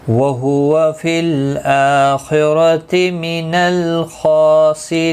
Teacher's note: را زیر کی وجہ سے باریک پڑا جائے گا